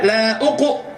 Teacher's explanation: mempraktekkan huruf isti'la itu adalah dengan mencucu sehingga bunyi uqu